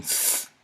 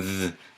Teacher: And you can hear the difference between th and th, and you can feel the difference in your voice box. You can feel the voicing.